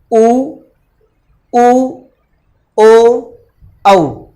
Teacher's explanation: बोलते समय हमारे होठ जो हैं उनको गोलाकार रूप दिया जाता है। जब तक हम होठों को गोल आकार में नहीं, इस तरह से अगर आप इनको गोल आकार में नहीं करते हैं होठों को, तो आप उनका उच्चारण नहीं कर सकते। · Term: वृत्तमुखी